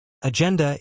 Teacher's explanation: Agenda is pronounced /den.d/, stressing that second syllable.